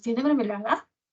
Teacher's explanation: Esa A aparece con un tono más alto que caracteriza este tipo de variaciones interrogativas totales · En la palabra tiene ha subido el tono, pero luego en mermelada, en la última sílaba de mermelada, sube el tono nuevamente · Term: entonación ascendente